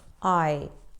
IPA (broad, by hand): aɪ